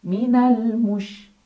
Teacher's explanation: shin punya ciri khas sifat yang tidak dimiliki huruf lain, namanya sifat tafashi yang artinya ada sebaran angin di dalam mulut.